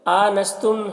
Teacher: حمزہ میں کھڑا زبر ہے، اسے ایک الف کے برابر کھینچ کر پڑھیں گے